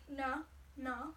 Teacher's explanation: that's the retroflex nasal.